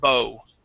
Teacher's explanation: OW is only going to pronounce an O sound, no oo at the end